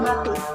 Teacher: Posisi bibirnya sama seperti P, bibir saling menutup lalu dibuka. Suaranya itu bersuara.